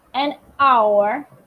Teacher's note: the H in the beginning of the hour is silent